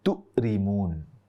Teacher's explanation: mengucapkan huruf kaf tapi berubah menjadi huruf hamzah